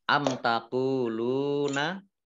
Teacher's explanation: mim sukun bertemu dengan huruf ta, bacaan izhar syafawi dibaca jelas. Qaf dhammah wawu sukun, lam dhammah wawu sukun, bacaan mat tabi'i panjang 2 harokat.